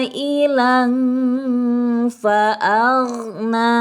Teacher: Ikhfa ausat, maka di sini harus dibaca samar dan didengungkan. Disamarkan dulu kemudian didengungkan.